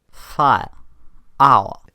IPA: faɪ̯ə̯ aʊ̯ə̯